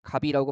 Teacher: 받침 시옷이 없어지게 되죠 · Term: 자음 탈락